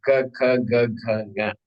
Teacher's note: it's all coming from one part of the mouth of this apparatus called kantaha, throat.